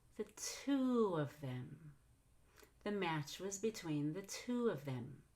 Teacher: You'll rise in pitch on to, but then fall in pitch on of them.